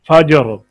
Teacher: الفجری، ٹھہر گئے، وقف کیا تو یہاں پر سکون پیدا ہو گیا